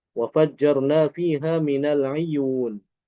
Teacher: Imam Al-Kisai baca dengan mengkasrokan ain.